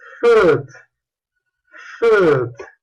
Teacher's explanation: este sonido es labiodental, labio inferior, diente superior, fricative, con una ligera obstrucción aquí, se produce turbulencia, and voiceless, sin vibración. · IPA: /f/